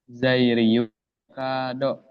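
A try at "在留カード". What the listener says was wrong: Ryu-nya agak panjang ya.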